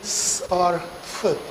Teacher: When we say s or f, then there is no engagement of the vocal cords, they don't vibrate